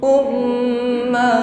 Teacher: Um tasdid gunah dengungkan dengan sempurna Um sampaikan pada makhatnyaq ketika mengucapkan ha Jangan ngambang umum hum